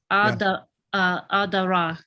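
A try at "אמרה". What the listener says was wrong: Amara. Yeah, that's a resh.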